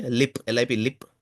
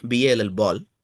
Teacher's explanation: in lip you see the light L, whereas in ball ball you see the dark L